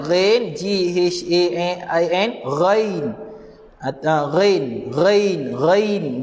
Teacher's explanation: Huruf ghain, makhraj dia level atas kerongkong.